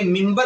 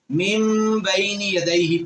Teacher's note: ہم اسے منبر نہیں پڑھتے بلکہ ممبر پڑھتے ہیں، یعنی کہ اس نون کو بھی ہم میم میں تبدیل کر دیتے ہیں کیونکہ یہ نون ساکن ہے اور اس کے بعد با آ رہی ہے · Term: اصول اقلاب